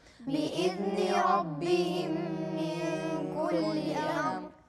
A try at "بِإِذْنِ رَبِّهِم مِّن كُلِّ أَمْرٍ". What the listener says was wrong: واضح الراء مرة ثانية.